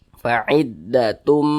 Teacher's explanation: Jadi dibaca tum, jangan dibaca tun tapi tum. Fa'iddatum, didengungkan.